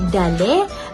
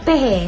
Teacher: vokal depan separuh tinggi iaitu dikenali sebagai I taling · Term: vokal I taling